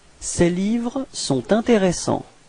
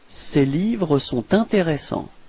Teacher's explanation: you can hear this small link between sont and intéressant